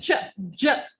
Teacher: friction partial closure advocates are combinations of stops and fricatives charger there's complete stop and then you produce it out with the friction